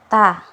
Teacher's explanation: huruf ta itu makhrajnya di ujung lidah bertemu dengan apa? Bertemu dengan belakang dua gigi seri atas.